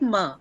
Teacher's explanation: Ma is a bilabial sound, but it has nasal quality. So it's a bilabial nasal sound.